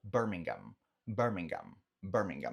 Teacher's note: Esse H, ele não é pronunciado